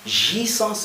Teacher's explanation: je dois nasaliser le A, jouissance, et je dois avaler le E, jouissance.